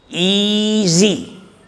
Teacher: the S in the word easy is pronounced as Z